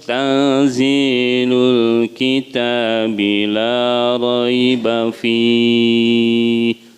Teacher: Antara nun dan eng gitu ya, antara eng, jadi disebutnya ikhfa samar.